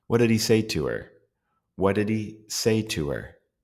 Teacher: Another feature of function words that you will notice is that, especially in American English, the H sounds will drop. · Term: H sound will drop